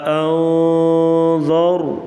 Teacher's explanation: را کو پر پڑا جائے گا اور نون کے اوپر اخفا کیا جائے گا. اخفا مطلب ناک میں آواز چھپا کر غنہ کیا جائے گا